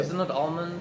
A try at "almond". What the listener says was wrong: No, it's like salmon. You don't say salmon. It's that same. It's a silent L.